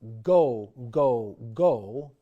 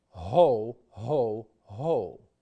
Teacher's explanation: In the case of the hard G, the consonant is formed with a click of the soft palate, g. In the case of the soft guttural g, the action of the soft palate against the surrounding tissues is much more gradual and gentle.